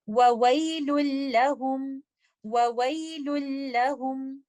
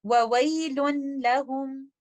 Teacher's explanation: یہ ادغام بغیر غنہ ہوگا لیکن یہ ادغام کامل ہوگا ، نون ساکنہ کو مکمل طور پر لام کے اندر مرج